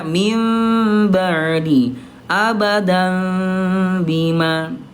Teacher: iqlab itu ada dengungnya, ada ikhfanya, ada samarnya. Jadi bibirnya agak samar.